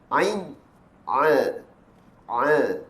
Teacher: huruf Ain ketika mana ia dilafazkan hendaklah ia tertahan nafas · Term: sifat al-jahar